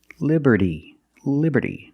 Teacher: the T and Liberty is between vowels so it's pronounced like a fast D